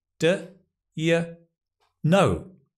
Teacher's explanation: Stress on the know.